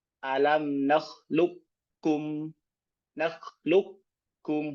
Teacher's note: Ya, ini dogom kamil, sempurna dibaca. Qaf sempurna masuk ke kaf.